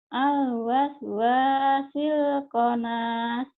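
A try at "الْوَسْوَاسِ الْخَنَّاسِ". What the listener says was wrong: Al-waswasil khannas. Bukan konas ya, khannas.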